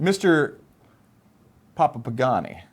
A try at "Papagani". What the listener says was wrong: Papagani, please. No, it's one word.